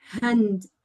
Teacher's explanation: at the beginning it's not hand with the Spanish J it's a soft sound